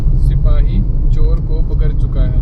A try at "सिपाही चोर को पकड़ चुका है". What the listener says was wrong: पकड़। र नहीं है, ड है। हाँ, जो ड के नीचे जो बिंदी होती है ना, जैसे चिड़िया होता है, चिड़िया नहीं होता ना। हाँ, तो वैसे ही पकड़।